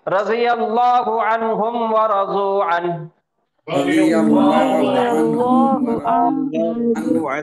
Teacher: یہ پھر ہو جائے گا اظہار کا قاعدہ، نون کی آواز کو پھر ظاہر کر کے پڑھیں گے